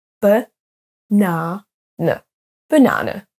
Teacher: Le premier A, ce sera un son schwa, donc un E. Ensuite, le deuxième A, ce sera un A. Et le troisième, ce sera de nouveau un son schwa. Ce qui nous donne banane, banane, au lieu de banana.